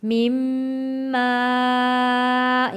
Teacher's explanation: خلق میم زیر والا تشدید والے میم کے ساتھ جوڑ کر پڑھیں گے اور غنہ ادا کریں گے